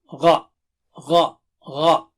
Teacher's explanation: How do you say gha? From the upper part of the throat.